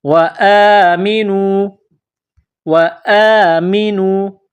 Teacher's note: الف کے اوپر کڑا زبر ہے. ایک الف کے برابر اس کو کھینچ کر پڑھیں گے.